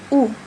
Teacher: उ जब हम बोलते हैं तो हमारे ओठों पे जोर पड़ता है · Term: ओष्ठ